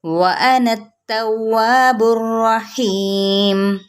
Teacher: وَأَنَا التَّوَّابُ الرَّحِيمُ یہ وَأَنَت نات نہیں پڑھنا، وَأَنَا توا پہلے ہون گول کریں گے، پھر الف کی جانب جائیں گے، پھر اب باقی پیش کو را کے ساتھ ملائیں گے، را کیا ہے، تفخیم کے ساتھ پڑھی جائے گی، یعنی پر پڑھا جائے گا موٹا کر کے۔ تواب الرحیم یا مدہ اور میم کیا ہے، ساکن کر دیں گے تو وقف بالاسکان، تو کیسے پڑھیں گے، وَأَنَا التَّوَّابُ الرَّحِيمُ۔